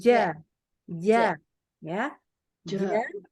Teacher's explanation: Jadi huruf jim itu tengahnya lidah. Ingat ya, tengah, nggak boleh ujung.